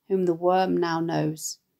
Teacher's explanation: the nasal consonants of the M sound in whom and worm